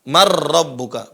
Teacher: Nunnya lebur, hilang. Kemudian huruf keduanya, huruf setelah nun sukun menjadi tasdid. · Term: idgham